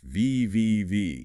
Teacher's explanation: your upper incisal edges lightly touch the wet dry line on the inner part of your lower lip